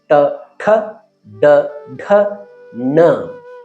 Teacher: ಎಲ್ಲಿ ನಾವು ನಮ್ಮ ನಾಲಿಗೆಯನ್ನು ಮಡಿಸಿ ಉಚ್ಚರಿಸುತ್ತೇವೆಯೋ ಅದು ಟ ವರ್ಗ.